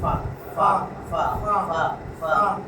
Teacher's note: অইন অইন অইন অইন, পরে মাখরাজে আসবে, এটা ফা ফা ফা, এক ফা ফা ফা ফা ফা ফা, ঠোঁটের নিচের পেট, ঠোঁটের যে নিচের পেট এই উপরের দাঁতের মধ্যে যায় লাগবে